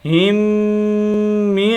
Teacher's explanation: دونوں میموں کو ایک کر دیں گے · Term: غنہ